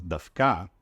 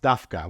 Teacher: the standard pronunciation is Dafka, with stress on the last syllable, it's often pronounced Dafka, with the stress on the first syllable